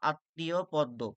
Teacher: শব্দের মধ্যে ম ফলা থাকলে সেই বর্ণ উচ্চারণে দ্বিত্ব হয় এবং সামান্য অনুনাসিক হয়।